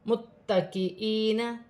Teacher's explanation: متکئین، تا مشدد ہے، جماؤں کے ساتھ ادا کیا جائے گا، یا ساکن سے پہلے زیر ہے، یا مدہ بنے گی، 1 الف کی مقدار کھینچ کر پڑھا جائے گا